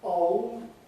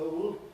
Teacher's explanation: he regarded ‘old’ [ɒʊld] instead of [əʊld] as non-RP